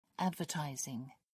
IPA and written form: ˈædvəˌtaɪzɪŋ (advertising)